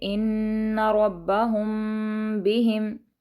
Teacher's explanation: ان کو ہم نے تھوڑا سا غنہ کے ساتھ پڑھا ہے کیونکہ نون پر تشدید ہے۔ ربہم، با پر بھی تشدید ہے تو با کو بھی ہم نے تھوڑا سا سختی سے پڑھا ہے۔ ان ربہم بہم، ٹھیک ہے، میم پر ہم تھوڑا سا رکیں گے کیونکہ با آ رہا ہے آگے، ہم یہاں پر اخفا کریں گے۔